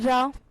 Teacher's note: आगे दिया है लुंठित या प्रकंपित व्यंजन। तो लुंठित व्यंजन उच्चारित होते समय जीभ ऊपरी मसूड़े की ओर उठती है